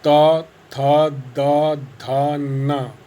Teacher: इसी प्रकार से त वर्ग के दंतव्य, यदि आप त वर्ग के जो हैं व्यंजन बोलेंगे त थ द ध न, तो आप ये देखेंगे कि जीवा दांतों के बीच में आती है